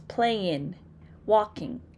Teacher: an African American English speaker may not be used to pronouncing the ng sound, right? So they tend to pronounce playin, walking, as opposed to playing, walking.